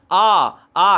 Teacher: अ आ का उच्चारण स्थान होता है कंठ।